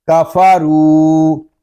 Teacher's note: آگے جو الف ہے یہ زائد ہے، اس الف کو ہم نہیں پڑھیں گے۔ را کو ہم ایک الف تک کھینچ کر پڑھیں گے کیونکہ یہاں پہ واو مدہ ہو رہا ہے۔ کفارو، میم نون زیر من، اس کو من اس طرح نہیں پڑھیں گے، نون ساکن ہے، اس کو سکون کے ساتھ ادا کریں گے۔